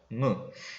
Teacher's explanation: 무 같은 경우는 입으로 공기가 나가는 것이 아니라 코로 공기가 나가게 되죠. 할 때, 그죠? 무. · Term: 비음